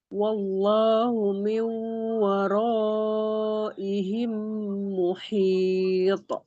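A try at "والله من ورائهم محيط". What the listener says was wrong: Wallahu, bukan wallah. Wallahu. Sampai bunyi Allah, jangan sampai berubah. Sekarang wawnya juga tipis. Waw juga harus tipis.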